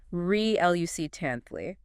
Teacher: 4 syllables. Stress on the second.